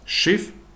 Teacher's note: Наступний приклад - це поєднання літер с, с та х. В німецькій мові таке поєднання вимовляється як ша